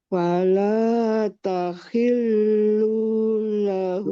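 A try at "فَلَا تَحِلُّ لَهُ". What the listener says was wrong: Lu-nya pendek. Tahillu lahu.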